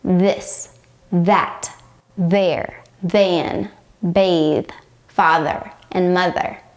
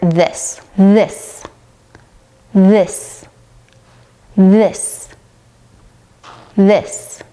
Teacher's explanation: throat and your vocal cords should vibrate during this one so stick out your tongue between your teeth blow out air and engage your vocal cords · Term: voice th